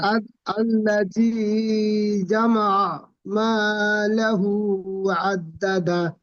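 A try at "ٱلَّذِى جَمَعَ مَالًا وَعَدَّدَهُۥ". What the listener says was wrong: মালাহু কথা পাচ্ছেন, মালাউ। হুম, আল্লাযী জামা মালাউ ওয়া'আদ্দাদা।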